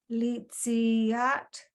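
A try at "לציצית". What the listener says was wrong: You need to stop after, so it needs to be li, si, at, not yacht.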